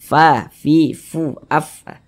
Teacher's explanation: huruf Fa itu salah satu huruf yang memiliki sifat hams jadi kita kalau mengucapkan huruf Fa itu ada nafas yang mengalir ketika Kita mengucapkannya